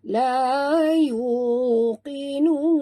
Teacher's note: Jangan baca kinun. Kalau kinun huruf kaf, ini huruf qaf tebal ya.